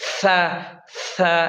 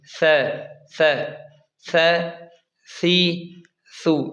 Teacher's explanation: ثا کو اس طرح نہ پڑھیں سیٹی کی طرح تیز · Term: نرم